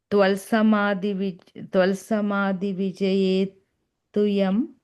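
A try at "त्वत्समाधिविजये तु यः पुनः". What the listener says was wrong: Yaf, yam. You're saying yam, it's yaf, F sound. Frank. Yaf punaha.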